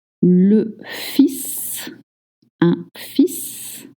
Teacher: As a rule in French, you don't pronounce the last consonant, but here you do have to voice the last consonant, the S sound, but you don't pronounce the L that comes before